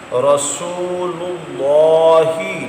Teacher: اللہ کے لام سے پہلے پیش آ رہا ہے، اس کو بھی پر پڑھیں گے